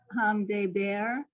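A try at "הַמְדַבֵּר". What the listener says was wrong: Hamdaber. Daber. Da. There's the ah under the dalid. There's a straight line.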